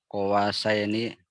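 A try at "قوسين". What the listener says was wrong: Qausai, bukan qawa, qausaini.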